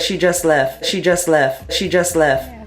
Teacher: in a word like West you might hear it pronounced as Wes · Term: consonant cluster simplification